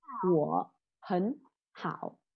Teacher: ba thanh ba đi cùng với nhau. Thì cái từ ở giữa mình sẽ nói như thanh hai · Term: biến điệu